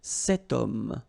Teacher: We've got this H letter. Remember, H is not pronounced, okay? So you've got the sound of O at the beginning of this word